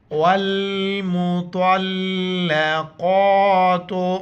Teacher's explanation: والمطلقات، واو کو لام کے ساتھ ملائیں گے، بیچ میں الف کو نہیں پڑھیں گے۔ طا اور قاف دونوں موٹے الفاظ ہیں، موٹا کر کے پڑھیں گے اور طا کو لام کے ساتھ ملائیں گے۔ جس لفظ کے اوپر شد آ جائے وہ لفظ سختی کے ساتھ پڑھا جاتا ہے۔